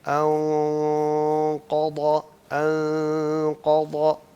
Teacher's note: اچھا ہمارے پاس یہ مثال آ گئی ہے کہ اخفا ہے، یعنی نون کو چھپایا جا رہا ہے، اور اس کے بعد جو نیکسٹ حرف ہے وہ حرف مفخم ہے، موٹا حرف ہے. تو یہاں ہم اخفا کو بھی موٹا کر دیا کرتے ہیں، یعنی اس غننے کی آواز کو، جو نون کی چھپانے کی آواز ہے اس کو بھی موٹا کر دیا کرتے ہیں. ہم کہیں گے انقضا. · قاف موٹا ہے اور اس سے پہلے غنہ بھی موٹا ہے، اس کے بعد ضاد ہے جو موٹا ہے، اور پھر ضا بھی موٹا ہے.